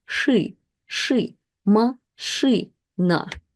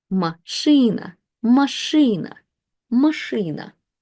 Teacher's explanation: sh is the consonant that is always hard, and it has the effect on vowels. It doesn't affect the vowels that make a preceding consonant hard, but it does affect vowels that make the preceding consonants soft, which is E. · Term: kind of harden